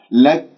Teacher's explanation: لما أقف بالكاف راح تكون ساكنة ويكون بالهمس، لأنه الكاف شديدة مهموسة. لكن لا أبالغ لك، هكذا مبالغة، فانتبهوا بارك الله فيكم.